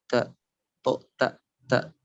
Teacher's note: Ta dan to bertemu, ya, ujung lidah bertemu dengan gusi atas.